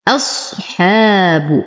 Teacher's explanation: ارقق الهمزه واخلصها من تفخيم الصاد